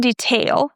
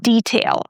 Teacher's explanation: So, it's not detail. We don't stress tail. We stress the first syllable